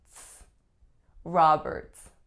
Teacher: The ending of the ts is pretty tricky. It's an alveolar affricate, so it's not a t, it's not a s. It's really a combination of both.